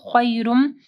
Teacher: یا ساکن سے پہلے خا کے اوپر زبر ہے، تو یہاں پہ مدلین آ رہی ہے. خیرم، خیرم نہیں پڑھنا، خیرم.